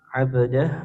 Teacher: ba sukun hukumnya qalqalah atau dipetulkan